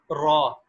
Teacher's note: را کا مخرج کہ زبان کا کنارہ یعنی زبان کی نوک، کنارہ نہیں زبان کی نوک یہ اوپر کے تالو سے لگے، زبان کی نوک اوپر کے تالو سے لگے تو یعنی منہ کا جو ہمارا اوپر والا حصہ ہے اس سے ٹکرائے زبان کی نوک، اس سے را ادا ہوتا ہے